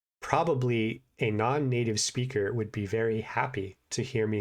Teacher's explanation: that they are at a relatively low level of English because I am enunciating every sound and I am putting notable pauses between almost every word